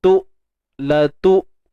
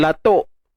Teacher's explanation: Hamzah ni kita matikan betul-betul. Tu, la tu. Jangan latuk.